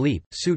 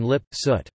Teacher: the opposition of tense vowels as in leap, suit vs. lax vowels as in lip, soot